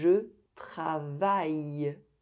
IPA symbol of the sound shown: j